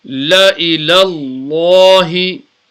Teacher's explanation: So remember we read the lam with tafkhim. Tafkhim means deep because the letter before is got sabr on.